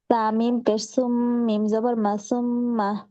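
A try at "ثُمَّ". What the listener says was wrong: তারপর সা উচ্চারণ হচ্ছে না। জিব্বার জিব্বার আগাটা আপু উপরে দুই দাঁতের সাথে লাগিয়ে তারপর উচ্চারণ করেন তো। একটু বের করতে হবে আপু, শুধু লাগালে হবে না, একটু বের করতে হবে জিব্বাটা দাঁতের থেকে একটু বাইরে থাকা।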